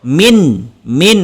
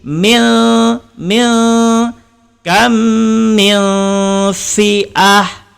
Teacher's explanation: Contoh, min sampai langit-langit. Tetapi sebab kita menyembunyikan nun, maka lidah tergantung, tidak sampai ke langit-langit. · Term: ikhfa hakiki